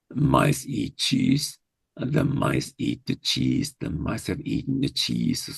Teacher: So you add a reduced syllable to the sentence so that you have a longer, when you count the syllables, you have a longer sentence, but actually the rhythm is the same.